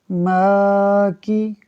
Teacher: کاف کے نیچے حرکت ہے اس لیے نہیں کھینچیں گے